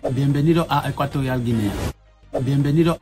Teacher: you can hear in the word for welcome, bienvenido, that he's actually saying the D there